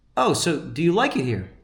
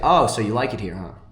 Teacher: So it's just going up. The tonality is going up. And you want it's like, "Oh, so you like it here, huh?" That's just a little tonality trick. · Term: uptalk